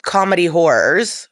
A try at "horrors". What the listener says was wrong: sounds like you're saying comedy horrors. You're trying to say horror, but you're refusing to shape the word with consonants.